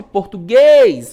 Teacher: Então, sílaba tônica, a última, temos uma oxítona